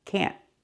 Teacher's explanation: We use a stop T. Put the tongue up and stop the air. Can't. Like that.